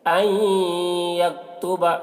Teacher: نون ساکن کے بعد یا ہے حروف یومن میں سے، تو نون کو یا سے ملا کر غنہ کے ساتھ پڑھیں گے، اس کو ادغام ناقص کہتے ہیں.